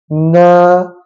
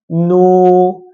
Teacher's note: kena ada sedikit bunyi daripada rongga hidung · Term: makhraj Nun